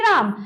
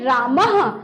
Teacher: विसर्ग का मतलब होता है कि उसका उच्चारण ह घोष वर्ण ह की तरह होना चाहिए